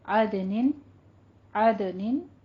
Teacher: عدن عدن دال کے اوپر قلقلہ کریں گے